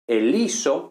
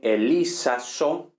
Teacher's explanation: caída de la sigma intervocálica, contracción de A-O, nos da omega